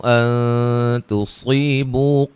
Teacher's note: صاد کو موٹا ادا کریں گے، تا کو باریک